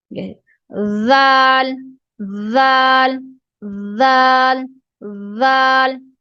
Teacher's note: ہماری زبان کی نوک ہے وہ اوپر والے اور نیچے والے دانتوں کے درمیان رہتی ہے